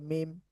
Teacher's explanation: দুই ঠোটের শুকন জায়গা হতে উচ্চারিত হয়